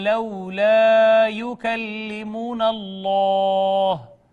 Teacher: اس میں جلالت مفخم ما قبل مفتوح ہونے کی وجہ سے